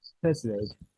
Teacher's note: You have the stress in the second syllable.